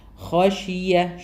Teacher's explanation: ഹഷിയ ഇവിടെ സുക്കൂനെ നൂന് ശേഷം ഹാ വരുന്നുണ്ട് ഇദ്ഹാറാന്ന് മണിക്കാതെ തന്നെ പറയാം ഹ ഹെവി ആക്കിയിട്ട് തന്നെ പറയണം